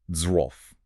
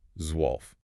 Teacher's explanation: You got the sharp Z, the W acting like a V, the O umlaut, and then that LF cluster.